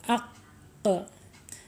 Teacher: mempunyai sifat eh qolqala ya mantul ketika harakatnya sukun